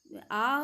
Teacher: आ जब हम उच्चारण करते हैं तो हमारा मुंह जो है पूरा खुलता है